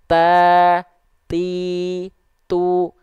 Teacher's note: vokal harakatnya ta ti tu kedengaran enggak Sebenarnya ada di dia percikan nafasnya kedengaran enggak jadi bukan enggak ada ada cuman dia samar-samar Kehalangin sama vokal aiu-nya